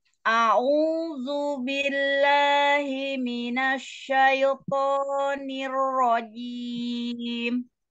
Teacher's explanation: A-nya jangan naik. Datar, lidahnya datar, jangan naik, jangan ke hidung.